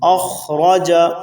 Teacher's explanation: یہاں خا کو بھی پر پڑھنا ہے، را کے اوپر زبر ہے اس کو بھی پر پڑھنا ہے